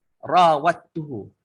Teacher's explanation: Okey, syaddah ni adalah idgham. Idgham dal dengan ta. Okey, idgham dal dengan ta ni dia syaddahkan.